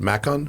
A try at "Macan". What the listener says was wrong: Macan. It's the second A sound is long, because it's also Taycan here. We'd say Taycan.